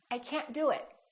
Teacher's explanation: you need to hold the t at the end to have a more American accent